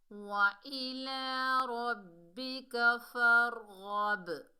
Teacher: باقی double sound آئے گی کیونکہ یہ کتب جدن میں سے ہے، یعنی حروف قلقلہ میں سے ہے، ساکن حالت میں آ رہا ہے